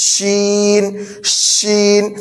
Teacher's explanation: اس میں بھی ہم سیٹی نکالیں گے، لیکن اس کی سیٹی سے مختلف ہوگی، اس میں زبان کے بیچ کا حصہ تالو میں لگائیں گے، ایسے کہیں گے شین شین۔